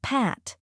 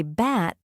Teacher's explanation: You'll feel a small puff of air on P, but not on B. This air release gives English its crisp sound.